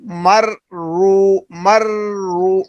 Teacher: را پر شد آ رہی ہے، تو را کو ہم نے سختی سے ادا کرنا ہے اور تھوڑا رک کر پڑھنا ہے۔ میم را زبر مر، را وا پیش رو، مر رو، مر رو، مرو نہیں پڑھنا، مرو نہ، رکنا ہے ایک لمحے کے لیے، رکنے کے بعد پھر پڑھنا ہے۔